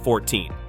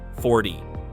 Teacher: In 14, the stress is on the second syllable, 14. In 40, the stress is on the first syllable, 40.